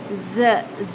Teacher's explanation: ز جو حرف ہے وہ سیم ایز اٹ از ہے جیسے ہم اردو میں پڑھتے ہیں، شدت کے ساتھ، سیٹی کے ساتھ